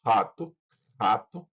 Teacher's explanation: Pode soar como uma consoante gutural velar